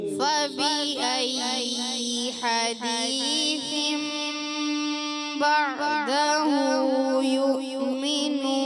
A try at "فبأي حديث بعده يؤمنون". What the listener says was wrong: دوبارہ فبأي ایسا ہوا لمبا یا کی زیر لمبی نہیں کرنی ورنہ غلط ہو جائے گا حرکت کو کھینچنا نہیں ہے نا دوبارہ